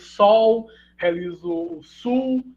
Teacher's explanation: tendência de vocalização, né, da lateral final e final de sílaba